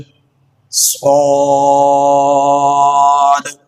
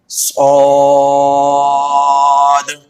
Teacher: اس لفظ کو موٹا پڑھیں گے اور اس پر ہونٹ گول نہیں کریں گے، اس طرح سے نہیں پڑھیں گے اس کو صاد ایسا نہیں پڑھیں گے، بلکہ ہونٹوں کو اپنی حالت میں برقرار رکھیں گے۔